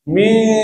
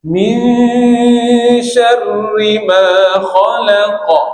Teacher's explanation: Masa dengung tu dah ada bunyi angin shin dah. Mish. Bunyi tu dah berangin. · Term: ikhfa